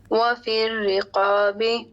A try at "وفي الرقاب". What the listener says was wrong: جی آپ نے پڑھا تھا الف مدہ جو ہوگا, جو الف آئے گا اس سے ماقبل اگر موٹا حرف ہے تو وہ موٹا ہو جائے گا, موٹا کیجئے. قاف ہے, اس کے بعد الف ہے رقاب میں. وفی الرقاب.